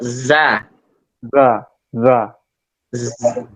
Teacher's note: ujung lidah ketemu dengan gigi geram bagian bawah